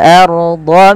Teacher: tebalkan ra sukunnya karena ia ra tafkhim, yang dimana ra sukun didalu dengan fathah.